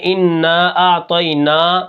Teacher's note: طا کو ہم موٹا کریں گے، ٹھیک ہے، اور اس کے اندر قلقلہ بھی ہے جب یہ ساکن ہوتا ہے